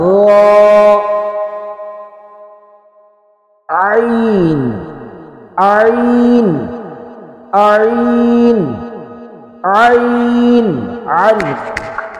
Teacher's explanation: عین عین عین عین عین حلق سے ادا کریں گے